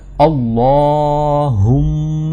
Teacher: ہے نا، تو شدہ کا کیا مطلب ہے کہ ایک تو اس لام کو موٹا کرنا ہے کیونکہ اس پر کھڑی زبر ہے، اور دوسرا اس شدہ کو سختی کے ساتھ ادا کرنا ہے